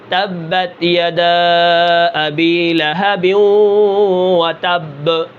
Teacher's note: با کے اندر قلقلہ ہوتا ہے. جب یہ ساکن ہوتی ہے تو آخر میں ہلتی ہے